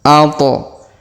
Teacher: qalqalah ya, atau huruf pantul. Maka to kita pantulkan.